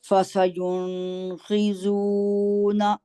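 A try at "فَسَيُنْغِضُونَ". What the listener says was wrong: جی آپ نے نون پہ آواز یہاں نہیں ٹھہرانی، ٹھیک ہے، جی اس کو غائن کو بھی فسینغیدون، ٹھیک ہے، دوبارہ کی طرف.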